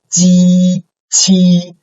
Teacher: There's no air, the air is blocked and then suddenly released